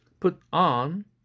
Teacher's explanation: 이 put on, 그런데 이 put on toward verb에서는 뒤에 나오는 이 on과 같은 부사의 액센트가 갑니다. 오히려 put은 동사하고 내용어입니다만 대강세 못 가져가고 일단 삼강세로 소강세로 떨어집니다.